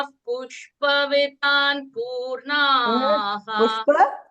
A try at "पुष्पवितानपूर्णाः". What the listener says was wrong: Not vitan. Pushpa. It's not Hindi. Pushpa. Read the akshara. Pushpa vi. Vita. So it is Pushpa. Pushpa Vitana. It is not Hindi where you say Kamala as Kamal. you say Kamala in Sanskritam.